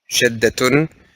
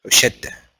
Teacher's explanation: But because we stopped at the ta, we said whenever you stop on the ta, you pronounce it as a ha